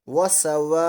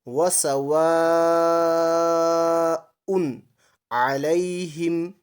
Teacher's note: حمزہ اسی کلمے میں ہو تو مد متصل ہوتی ہے، اور یہ مد 5 الف کے بقدر کھینچی جائے گی